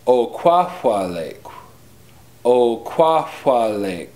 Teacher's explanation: there is a K raised W, which is similar to the English K, but with your lips rounded